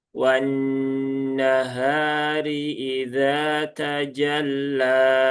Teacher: Kemudian lam bertasydid tadi sudah ya tajalla tidak perlu ditahan lama-lama dan di sini ada fathah berdiri atau tadi ya ada alif maksurah maka dibaca panjang dua harakat